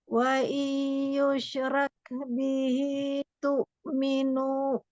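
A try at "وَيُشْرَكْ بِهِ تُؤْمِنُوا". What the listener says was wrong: Kurang dengung sedikit nun ketemu ya-nya. Minu. Nu-nya 2 harokat, jangan pakai hamzah belakangnya. Nanti selalu lebih panjang dengungnya ya.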